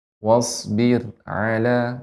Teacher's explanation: wasbir dibaca dengan tipis ra-nya. Karena sebelumnya ba yang berharokat kasrah.